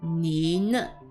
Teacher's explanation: 你 is the third tone and na being the neutral tone, not first tone like the flat tone, but na, light tone.